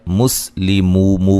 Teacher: واو مدہ ہے، وقفاً بڑی مد کے ساتھ پڑھ سکتے ہیں